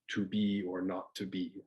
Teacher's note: unstressed syllable followed by a stressed syllable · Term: iambic verse